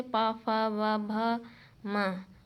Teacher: पा वर्ग जैसे पा, फा, वा, भा, मा ओष्ठ से बोले जाते हैं